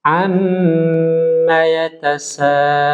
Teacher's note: Perhatikan di sini huruf mim bertasydid, ya. Ya, huruf mim bertasydid ini harus ditempo